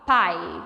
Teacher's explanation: quando você pronuncia a palavra pai, o I acaba saindo um pouquinho mais fraco que o A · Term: semivogal